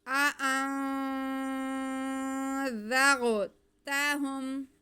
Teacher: आ अन, आगे नून साकिन के बाद ज़ाल हुरूफ इख्फा में से आ रहा है, तो यहाँ पे हम नून की आवाज़ को नाक में छुपा के पढ़ेंगे, फिर उसके बाद ज़ाल को हम बहुत नरमी से पढ़ेंगे, गुन्ना करते हुए हम आगे ज़ाल अदा करेंगे।